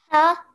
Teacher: So remember your ha, the sound comes from the middle of the throat.